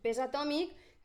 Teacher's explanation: la S, que és una fricativa, per tant, a soles seria una sorda, quan va seguida de vocal, la regla ens diu que és una sonora. I així, peix, es manté, és una sorda, més una K, segueix, sorda.